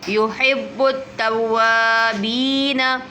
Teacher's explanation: دیکھیں یحب ہا لگائیں گے، ہا نہیں پڑھیں گے، یحب نہیں پڑھیں گے، یحب با پر جماؤ کریں گے، حرف قلقلہ میں سے ہے، توابی کو کھینچیں گے، یا مدہ ہو رہا ہے